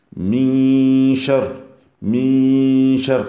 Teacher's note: on va faire al-ikhfa, c'est-à-dire qu'on va un peu cacher le noun.